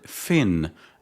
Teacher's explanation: The word fin opens with a labod dental consonant produced when the lower lip touches the upper teeth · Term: labiodental consonant